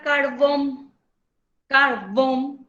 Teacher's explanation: se carga también en la última sílaba cuando se carga en la última sílaba es una palabra aguda